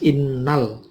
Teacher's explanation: ada al ta'rif ketemu hamzah, namanya al-qamariyah, maka alnya dibaca jelas